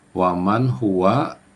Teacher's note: nun mati atau nun sukun bertemu dengan huruf ha itu izhar. Jadi dibaca jelas